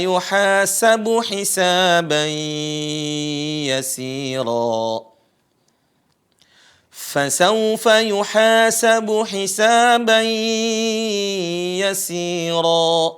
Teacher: Ada tanwin bertemu dengan ya. Sama ini juga suara nunnya, ya, suara n-nya hilang. Atau bahasanya adalah idgham.